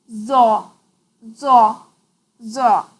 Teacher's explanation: The pronunciation of za is different from za and zal as it is a heavy letter. While pronouncing za, touch the tip of the tongue to the edge of the upper teeth and blow with a very thick and high sound.